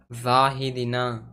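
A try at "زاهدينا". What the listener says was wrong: यहाँ पे क्या है? या साकिन से पहले क्या है? क्या होगा? तो या मद्दा होगा तो खींच कर पढ़ेंगे ना, दीना होगा। दीना क्यों होगा? दीना होगा ना।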